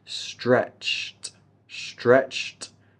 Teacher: We have that ed sound that will give us a T.